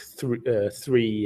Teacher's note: A lot of Danish people will take the easy way out and just say free. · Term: th sound